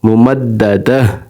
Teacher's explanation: اگر یہاں پر وقف نہیں کریں گے تو غنہ ہوگا، اگر وقف کریں گے تو تا ہا بن جائے گی، ہا پڑی جائے گی، ہا ساکنہ بن جائے گی، دال ہا دہ پڑھا جائے گا، ممددہ.